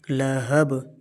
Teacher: ہا کو ساکن نہیں کرنا اور با کو قلقلہ کرنا ہے